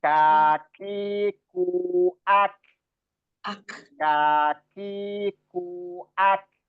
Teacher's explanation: Jadi huruf kaf itu siddah dan hamas.